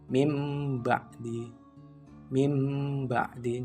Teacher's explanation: membalikkan bunyi nun mati atau tanwin menjadi Bunyi mim mati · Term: iqlab